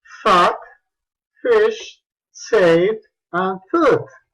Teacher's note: Como tú pudiste notar, este sonido es labiodental, labio inferior, diente superior, fricative, con una ligera obstrucción aquí, se produce turbulencia, and voiceless, sin vibración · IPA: /f/